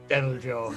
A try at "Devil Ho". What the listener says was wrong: Devil Ho, not Devil Joe. He's clearly a jalapeno. So there's no Joe, there is only Ho.